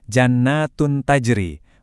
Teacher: Soalnya posisi makhraj ketiga huruf ini tuh dekat banget sama posisi huruf nun di dalam rongga mulut kita. Jadinya suara dengungnya itu kedengaran lebih singkat dan lumayan mirip sama bunyi asli huruf N walaupun tetap disamarkan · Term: ikhfa akrab